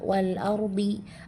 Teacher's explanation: Selanjutnya pada kalimat wal ardihi ada ro sukun sebelumnya berharakat fathah dia dibaca tafkhim jadi dibaca tebal. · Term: ro tafkhim